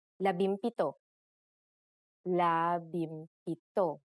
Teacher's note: If a P follows the NG connector, the NG becomes an M, just like in labimpito.